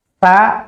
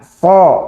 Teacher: Dari sisi nafas, sama mengalir nafasnya. Tetapi dari sisi posisi lidah, terangkat tidak terangkatnya berbeda. Sin tidak terangkat. Shad terangkat.